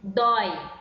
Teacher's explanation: é um encontro de duas vogais e que ficam na mesma sílaba certo por exemplo dói e dói é o ó e ue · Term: ditongo